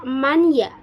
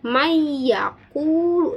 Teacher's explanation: seolah-olah nun tersebut tidak ada atau tidak terbaca. Mayya tidak dibaca man ya, tetapi may yaquulu dimasukkan. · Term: idgham